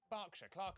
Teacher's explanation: er is pronounced ah